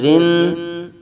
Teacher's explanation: را بریک پڑھیں گے، را نون زیر رن